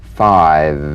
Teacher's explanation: this is voiced fricative labiodental upper teeth to lower lip feel the teeth planted right in · upper teeth to lower lip feel the teeth planted right in the lower lip and you set the lower lip vibrating that's what makes the sound you'll feel a gentle dark buzzing